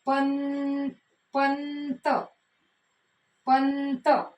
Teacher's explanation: त वर्गातल न अनुनासिक येणार